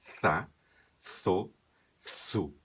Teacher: Na Espanha, também se pronuncia com a língua entre os dentes.